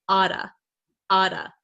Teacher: So this double T here becomes a flap T, which sounds like a D sound.